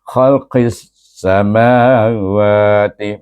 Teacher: Jadi bunyinya qis. Dan sin adalah hamas, jadi berangin bunyinya.